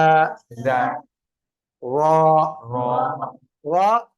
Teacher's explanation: பத்ஹா பெற்று வரும்போது வல்லினமாக ஓத வேண்டும்